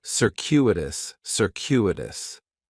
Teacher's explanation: The stress is going to be on that second syllable, and that CU is kind of like you're saying the letter Q